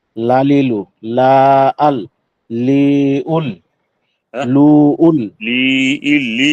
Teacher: হরফ কে হরফে হাফিয়া বলে জিহ্বার আগার কিনারা বলে হাফিয়াহ বলে জিহ্বার আগার কিনারা সামনে উপরে একপাশের দাঁতের মাড়ির সঙ্গে লাগাইয়া লাম উচ্চারিত হয়